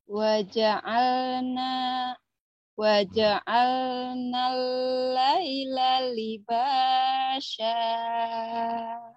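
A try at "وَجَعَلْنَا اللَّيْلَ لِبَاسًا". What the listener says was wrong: Sinnya gede apa kecil? sini kecil kecil ya. Jangan digedein.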